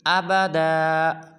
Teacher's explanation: بعض مسلمان پڑھتے ہیں آبادا، یہ بالکل غلط ہے، پڑھیں گے ابدا